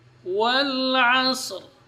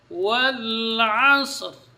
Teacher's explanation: lam di sini itu huruf tawassut, jadi tidak tertahan ketika dia sukun.